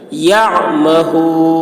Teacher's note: आइन हलक से अदा करेंगे